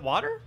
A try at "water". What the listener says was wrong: You're saying D instead of T.